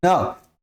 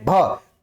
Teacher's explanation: अगर आप न का प्रयोग करें तो नाक पर प्रेशर पड़ेगा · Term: अनुनासिक